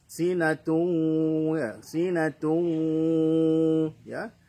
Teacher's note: idgham dengungkan, kemudian suaranya masuk ke khayshum ya. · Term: idgham bi gunnah